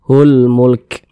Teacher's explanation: Maka alif lam berjumpa dengan huruf mim, karena huruf mim huruf qamariyah, maka hukumnya adalah alif lam qamariyah. Alif lam qamariyah, maka huruf lamnya dibaca izhar, terbaca dia